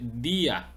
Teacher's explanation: es di a termina en vocal pero el acento la tilde la fuerza la sílaba tónica está en la letra i por lo tanto se dice día Aquí se rompe el diptongo